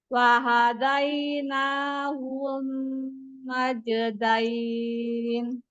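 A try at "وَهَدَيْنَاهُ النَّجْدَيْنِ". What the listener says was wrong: Ketika hu-nya langsung masuk ke na, jangan hu dipanjang. Wahadainahun najdain. Nahun. Nanya panjang. Nanya aja panjang.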